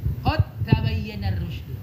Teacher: Ya, lihat dalnya nggak ditulis tanda sukunnya, taknya bertasydid, langsung masukin dal ke ta dengan sempurna, idgham kamil atau tam, sehingga bacanya jangan kode lagi tapi qad tabayyana.